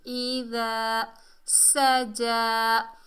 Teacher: सीन को सख्ती और सीटी से अदा करेंगे। खड़े ज़बर को एक अलिफ की मिकदार खींच कर पढ़ेंगे।